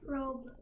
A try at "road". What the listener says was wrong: Not robe. Road. That's a D. Road.